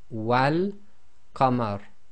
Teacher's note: So we got the fatha on the wa. So the wa will now join to the lam in the definite article in this case, because this is one of the moon letters, and the giveaway here is the lam has got a sukoon on it, so it is going to be involved in the sound.